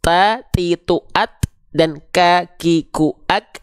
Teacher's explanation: Tapi kenapa untuk huruf ta, ti, tu, at dan ka, ki, ku, ak hanya berupa percikan nafas